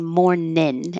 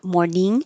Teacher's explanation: you can make morning more casual by saying morningin and then your tongue is in the front to make the in